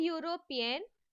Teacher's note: even though the word European starts with the vowel letter, it produces the sound yo